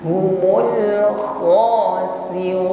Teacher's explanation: Mul humul kho, tebalkan huruf kho karena sifatnya isti'la. Kho ada dengkur ya, ngorok maksudnya, tapi tetap khafa ya, lembut, jangan ditekan berlebihan, bukan kho ya, ada gesekan di tenggorokan.